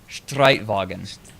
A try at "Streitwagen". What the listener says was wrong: Your R is wrong. Say Robinsons. Yeah, no, it's your R. You're making an O, but it's actually an R. Like, so it has to be drier.